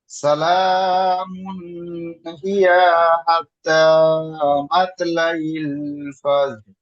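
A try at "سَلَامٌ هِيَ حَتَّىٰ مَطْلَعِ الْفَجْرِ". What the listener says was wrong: জি, এখানে ইয়াটা টান হয়ে যাচ্ছে, এটা টান হবে না। সালামুন হিয়া হাত্তা মাতলাইল ফাজর।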